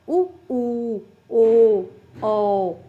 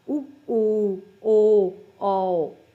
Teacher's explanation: ਉਹ ਧੁਨੀਆਂ ਹੁੰਦੀਆਂ ਨੇ ਜਿਨ੍ਹਾਂ ਦੇ ਉਚਾਰਨ ਸਮੇਂ ਬੁੱਲਾਂ ਜਿਹੜੇ ਕਿ ਗੋਲ ਸਥਿਤੀ ਦੇ ਵਿੱਚ ਹੁੰਦੇ ਨੇ, ਜਿਨ੍ਹਾਂ ਦਾ ਆਪਾਂ ਉਚਾਰਨ ਜਦੋਂ ਕਰਦੇ ਤਾਂ ਆਪਣੇ ਬੁੱਲ ਗੋਲ ਹੁੰਦੇ ਨੇ, ਠੀਕ ਆ, ਉਹ ਹੁੰਦੇ ਨਾ ਗੁਲਾਈਦਾਰ। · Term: ਗੋਲ ਸਵਰ ਧੁਨੀਆਂ